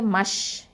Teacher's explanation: இந்த ஷ் அப்படின்னு சொல்லும் போது தஃபஷி அந்த தன்மையை வந்து நம்ம வெளிப்படுத்தணும்